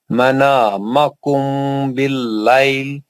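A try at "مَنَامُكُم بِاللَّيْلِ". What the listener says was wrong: منامکم نہیں ہے، پیش ہے میم پہ.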